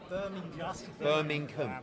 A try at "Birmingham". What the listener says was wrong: Birmingham. Yeah, it's no, but you're missing a G. It's not a silent.